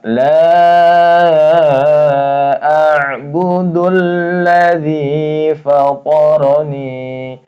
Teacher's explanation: Ini a ya ain ain itu tengah tenggorokan ya. Bukan a bukan hamzah tapi ain ya. A ini tawasut ya.